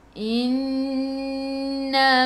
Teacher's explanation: Innama nun ada sabdu, tekan ke dalam nun dan dengung 2 harakat. Wajibul gunnah, wajib dengung.